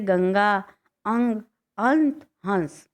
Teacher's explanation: इसको उच्चारण करते समय हवा नाक से निकलती है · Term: अनुस्वार